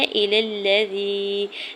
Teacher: لام کے زبر کو لام مشدد کے ساتھ ملاتے ہوئے پڑھنا ہے، یا ساکن سے پہلے زا کے نیچے زیر ہے یا مدہ ہو رہا ہے۔